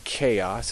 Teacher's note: CH is always uh like a k really as in chaos it's never cha